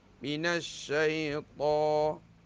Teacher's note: To kena tebal. Panjang dua harakat.